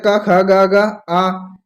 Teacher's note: का वर्ग है जो कंठ द्वारा बोला जाता है। का, खा, गा, गा, आ, ये कंठ द्वारा बोले जाते हैं दोस्तों।